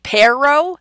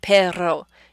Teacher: So it's the difference between perro, using the upside down R, and perro, using the trilled R.